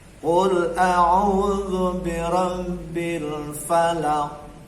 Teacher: Berhenti di huruf ko harus mantul. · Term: qalqalah